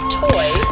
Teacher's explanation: We aspirate the T at the beginning of toy